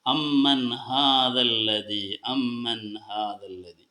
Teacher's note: സാക്കിനായ നൂ വന്നു അതിനുശേഷം ഹാ വന്നു അപ്പോ നമ്മൾ നൂനിനെ വ്യക്തമാക്കി ഉച്ചരിക്കണം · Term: ഇളഹാർ